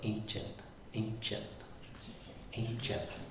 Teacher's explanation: So, consonants um the C is uh unaspirated and it's got like a J sound to it